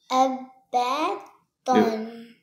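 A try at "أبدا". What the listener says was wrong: Don't give me a shadda sound. There's no shadda in here. Why are you saying abaddon? There's no alif by next to ba.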